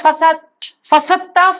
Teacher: اصل میں یہ دال اور تا کی جو مخرج ہے نا، وہ قریب المخرج ہے. تو قریب المخرج ہونے کی بنیاد پر دال کے لفظ کو نہیں نکالتے. · اس دال کو ساکن کر کے سائلنٹ کر دیتے ہیں اور تا پہ شد بیٹھا دیتے ہیں